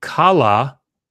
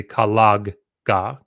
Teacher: this G is kala when you put a bow on it there's a G that is actually at the end of the word that doesn't show up unless you put in a vowel after it so it's actually collig if you have a vowel coming after